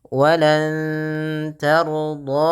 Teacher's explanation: nunnya samarkan ke kaf sambil ditahan dengan dua harakat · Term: ikhfa